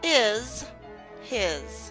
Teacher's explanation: remember, is and his, the S substitutes the Z